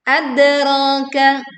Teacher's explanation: Dal sukun dibaca memantul, suaranya terdengar kuat.